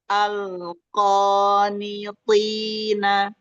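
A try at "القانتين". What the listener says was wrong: Nah, lagi ya kofnya tebalkan lagi. Al-qanitina. Nah, ketika dia sudah fathah, fathah itu kan anaknya alif nih, Umi. Berarti dia anaknya jauh, Anaknya jauh, pangkal lidah masih naik. Tapi ingat, pita suara ini tenang, tenggorokan tenang, ka, nggak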